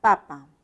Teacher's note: cuando articulamos la p no vamos a efectuar ninguna vibración por eso le decimos sordo